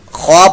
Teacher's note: خوا پر موٹا، حروف مستعلیہ میں سے را بھی پر موٹا ہوگا، یہ را پر زبر پیش ہو تو پر موٹا پڑا.